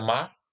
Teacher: Vamos nadar lá no mar, não precisa pronunciar o R.